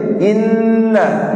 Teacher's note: inna, nun tasydid tahan dengung